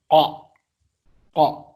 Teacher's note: Huruf qa dan huruf kaf tempat keluarnya itu berdekatan. Kalau qaf itu bagian lidah paling belakang. Qa, pangkal lidah paling belakang.